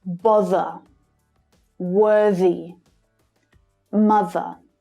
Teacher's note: a TH in the middle of the word, when it's between two vowel sounds, is usually this voiced sound